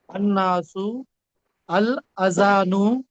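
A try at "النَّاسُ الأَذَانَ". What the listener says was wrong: अजानु ने आजानु, ये अलिफ को भूल गए आप, आजानु।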